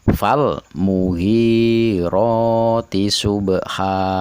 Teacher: Kata subha, ba-nya ada di tengah dan berharokat sukun asli, maka dipantulkan tidak begitu keras. Tidak subha, tapi secukupnya saja. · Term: qalqalah sugro